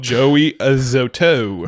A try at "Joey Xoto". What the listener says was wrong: Not a Xoto. Just Xoto.